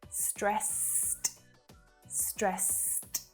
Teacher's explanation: it's really odd to pronounce ed as a T sound, but that's a really common feature of English pronunciation